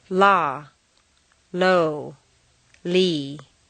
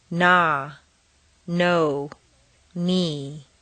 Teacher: L is lateral air flows around the sides of the tongue